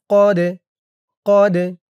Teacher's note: দালটা কলকলার হরফ ধাক্কা দিয়ে পড়তে হবে